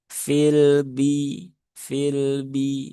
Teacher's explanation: Jadi bak sifatnya dia tidak ada ikutan, tidak ada aliran nafas, aliran udara yang keluar bersama dengan suara huruf bak itu sendiri. Nah, maka perlu dibersihkan.